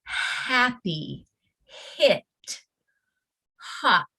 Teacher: the word starts with the puff of air but right away you move into the vowel sound · the sound is really no sound at all this is just a puff of air